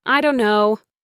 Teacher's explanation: The T in don't just disappears, and the words blend together into one lazy common phrase.